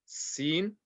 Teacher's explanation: tongue touching the bottom teeth, like the S in English